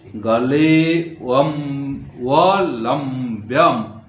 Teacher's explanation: ले में आधा एस जैसे लिखा है उसको खंडकार बोलते हैं उसका उच्चारण नहीं होता है लेकिन एककार को थोड़ा सा लंबा करना है